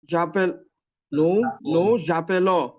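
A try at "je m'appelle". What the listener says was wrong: জাপে না। এটা পে ও পো হয়, হ্যাঁ? পকারে পো, বুঝতে এই পো জাপোলং।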